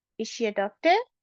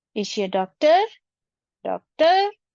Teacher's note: your intonation or the pitch of your voice will rise in the end.